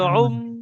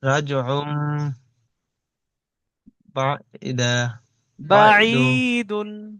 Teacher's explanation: উন পড়া যাবে না, কারণ আপনি এক্ষুনি বললেন যে ভাই তানবিনের পরে আইনের উপর দুই পেশ তানবিন এসছে, তানবিনের পরে বা এসছে, তাই তানবিনকে মিম দ্বারা পরিবর্তন করে একালি পরিমাণ গুণনা করে পড়তে হবে। তো আমি আর উন আর পড়তে পারবো, আইন দুপেশ উন হয়, আর উন পড়তে জি, পারবো না, এবার পড়তে হবে উম উম বলে ধরে রাখতে হবে রজ রাজউম জি।